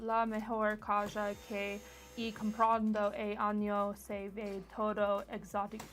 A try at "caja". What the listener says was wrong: So you definitely pronounced the J as a J and not a H. You said caja.